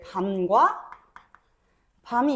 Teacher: 먹는 밤을 더 길게 발음하게 돼